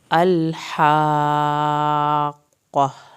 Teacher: ال میں لام نہیں ہلے گا، ہا کو حلق سے پڑھنا ہے، مد واجب کو صحیح ادا کرنا ہے۔